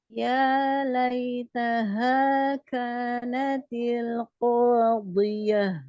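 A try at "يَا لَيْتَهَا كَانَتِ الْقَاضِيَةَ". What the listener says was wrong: Iya, nah, nanti catatannya mungkin tadi ya, hanya alirkan hamas pada ha ya, dan tadi, ringankan lagi pada saat isti'la huruf dhad ya.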